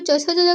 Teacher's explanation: जो च छ ज झ का उच्चारण स्थान होता है वो तालु से होता है